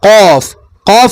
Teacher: ഈ നാവിൻ്റെ മുരട് എന്ത് ചെയ്യുന്നുണ്ട്? മേലോട്ട് പോകുന്നുണ്ട്. അതാണ് ഖാഫ്. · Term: ഖാഫിന്റെ മഖറജാണ്